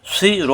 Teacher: জিব্বা নিচেতে চাপ দিয়ে সুই র এক আলিফ টান, রা হবে না